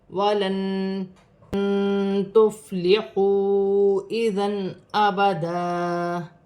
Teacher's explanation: وَلَن تُفْلِحُوا اِذًا أَبَدًا فا ساکن ہے, فا کو تا کی حرکت کے ساتھ ملا کر پڑھا جائے گا. واو ساکن سے پہلے پیش ہے, واو مدہ بنے گی, 1 الف کی مقدار کھینچ کر پڑھا جائے گا